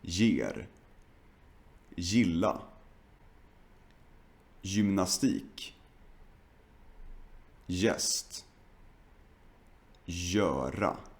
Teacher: We usually pronounce the Swedish G like j or like g. Now the Swedish G is usually pronounced like j when it's followed by a soft vowel.